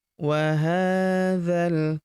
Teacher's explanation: Huruf ha kita panjangkan 2 harokat karena terdapat tanda alif kecil di atasnya